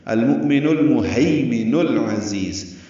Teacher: مؤمن میں حمزہ ساکن جھٹکے سے ادا ہوتا ہے، نون کو المہیمن کے لام سے ملانا ہے، ہے یا لین محیمن نہیں پڑھنا، المؤمن المہیمن العزیز، یہ بھی لام ساکن پڑھا جائے گا.